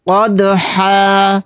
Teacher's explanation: آیت کرنے کی صورت میں ہا کے اوپر 2 زبر نہیں پڑھے جائیں گے، یہاں پر 1 زبر لگا کر الف کے ساتھ پڑھیں گے۔ قدحا، یعنی دال کے اوپر جزم ہے، دال ساکن ہے، تو اس کے اندر قلقلہ کریں گے۔